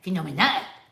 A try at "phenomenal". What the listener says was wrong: No, why do you put that stupid deep voice